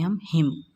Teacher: میم ساکن کے بعد با اور میم کے علاوہ کوئی دوسرا حرف ہے تو یہاں کیا ہوگا، اظہار شفوی ہوگا